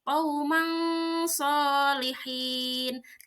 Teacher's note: Nah, yang dibaca samarnya itu adalah tanwinnya. Tanwin dibaca samar seperti qaumang solihin. Tidak dibaca qauman solihin, tapi harus samar. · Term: ikhfa